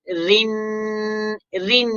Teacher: را کے نیچے زیر ہے تو باریک کر لیں گے